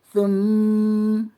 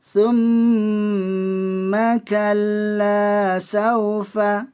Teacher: wajib al-gunnah dengan 2 harakat. Wajib dibaca dengung.